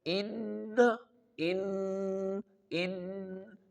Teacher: feel that the sound is going in your nose and a little vibration is producing in your nose during the recitation of this word. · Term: Ghunnah